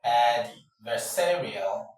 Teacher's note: It is the penultimate syllable, that is the syllable before the final that that attracts, that carries the stress. So your voice has to go louder on the third syllable, which is the penultimate one, the penultimate syllable.